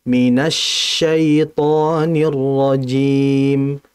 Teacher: Jadi shin ini, apalagi dia bertasydid, tafasyinya itu harus ditahan dengan kuat, dengan aliran yang ada.